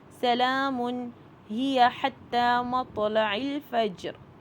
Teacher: حتی میں دیکھیے کھڑی زبر ہے، کھڑی زبر 2 کاؤنٹ ہوتی ہے. مطلع میں دیکھیے تو جو ہے وہ ساکن ہے اور یہاں پہ کلکلہ کا رول آ رہا ہے.